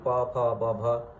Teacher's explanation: An aspirated series of both voiceless and voiced stops, producing a four-way contrast, as in pa, pha, ba, bha, at all the five basic points of articulation is normal and distinctive in all the NA languages or North Indo-Aryan languages.